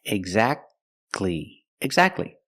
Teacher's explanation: don't pronounce a T exactly you go from the C Sound to the l sound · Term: silent